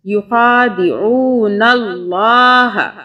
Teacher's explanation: لام کی 2 مرتبہ آواز تشدید کی وجہ سے